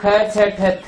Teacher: पांचों वर्गों के दूसरे वर्ण ख छ ठ थ फ वे सकार के समान महाप्राण